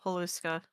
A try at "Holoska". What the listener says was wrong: It is not Haluska, it's Holoska.